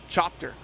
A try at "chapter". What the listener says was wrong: All the vowels but the one you're using. Chapter.